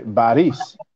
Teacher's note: in Arabic, there's no such thing as the P. So an Arab will not say Paris, he will say Baris.